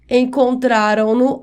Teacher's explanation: E se a forma verbal terminar em som nasal, ou seja, quando o som passa também pelo nariz durante a pronúncia, acrescenta-se n no pronome.